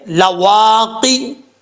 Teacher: وہاں پر زبان کی جڑ لگے گی تو قاف پڑھا جائے گا دو نقطوں والا